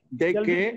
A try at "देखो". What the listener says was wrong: देखो नॉट देखे देखो